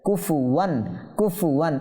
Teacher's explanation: এই ফাও টানবো না, কাফও টানবো না, যেহেতু হারকাত হয়েছে